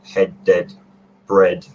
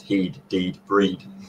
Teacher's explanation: I haven't heard that in particular, but it's interesting what you say about EA, the vowel that's spelled EA, because that used to be, it was on the path to becoming E, like long tense rather than lax E. So in some Northern English dialects and Scots dialects, you have head, dead, bread, pronounced heed, deed, breed